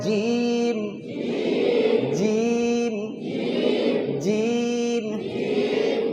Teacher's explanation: জিম কেমন করে উচ্চারণ হবে? জিবের মাঝখান আর উপরের তালু, জিবের মাঝখান উপরের তালু, আর শেষে 2টা ঠোঁট মিলে যাবে শব্দ শেষে।